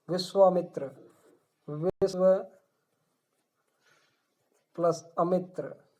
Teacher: ये ए और ए जुड़ के आ का उच्चारण कर रहे हैं, समान स्वर, दीर्घ स्वर संधि का उदाहरण है ये